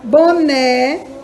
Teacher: é uma oxítona porque a última é que é mais forte